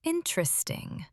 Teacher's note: with a tight smile and a falling tone. In British understatement, interesting can mean not ideal.